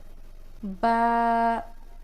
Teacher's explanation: बंद होठों के गिले हिस्से से